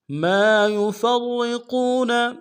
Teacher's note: ما یفرقون میم کے ساتھ الف مدہ ہے ایک مقدار میں کھینچیں گے، یا کو اور فا کو نون سے ادا کریں گے، فا کو را کے ساتھ ملانا ہے، را کو موٹا ادا کریں گے، را کے اوپر تشدید زور دیں گے، قاف کو واؤ کے ساتھ ملائیں گے، واؤ مدہ ایک مقدار میں کھینچیں گے، نون کو نون سے ادا کریں گے۔